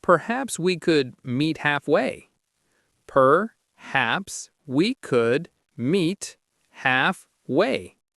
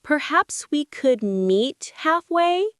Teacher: Stress is on haps in perhaps and half in halfway.